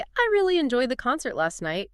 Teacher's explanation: But if you say, "I really enjoyed the concert last night." You're using stress to signal both the intensity of your feeling on the word really, and the focus of your experience, the concert.